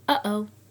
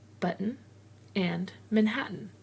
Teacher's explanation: It's a word broken with a pause at the T, just like uh-oh. That sounds like you are holding your breath at the back of your throat just long enough to give the feel of the T sound. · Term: glottal stop